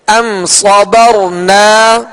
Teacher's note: را ساکن سے پہلے زبر ہے لہذا را کو پر پڑھیں گے.